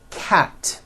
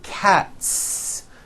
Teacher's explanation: Cat ends with an unvoiced T.